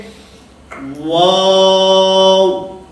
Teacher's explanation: حالانکہ واو کی ادائیگی میں شروع کے اندر ہونٹوں کو دخل ہے, یعنی واو کا جو مخرج ہے وہ شروع کے اندر ہونٹوں کو گول کرنا ہے